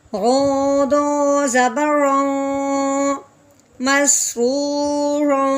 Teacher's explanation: رو کے اوپر تنوین ہے، آگے میم حرف الکی میں سے نہیں ہے تو تنوین پہ اخفا کا غنہ کریں گے